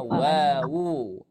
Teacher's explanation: Huruf waw itu makhrajnya ada di syafatain